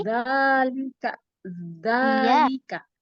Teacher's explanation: Lagi, keluarin lidahnya. Keluarin lidahnya, ujung lidah. Ketemu ujung gigi seri atas.